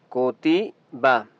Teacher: कुतिबा काफ पेशकू, इस काफ को बरीक पढ़ेंगे। कुतिबा, अब बा के ऊपर ज़बर है तो आपने इस बा को लंबा नहीं करना, ठीक है।